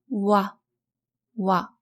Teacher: your lips first take a similar position to the vowel u, but slightly more rounded. Then transition to the next vowel, a, in the case of wa, for example.